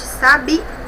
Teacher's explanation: Observe que a última sílaba que é a mais forte, sabia. Então, é uma palavra oxítona.